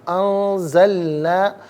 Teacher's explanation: وبالحق انزلناہ، انزلنا میں آپ دیکھیں نون ساکن اس کے بعد زا ہے، نون ساکن کے بعد زا حرف اخفا ہے، تو نون ساکن کو اخفا کے ساتھ پڑھیں گے، یعنی ناک میں آواز لے جا کر گنگنانا۔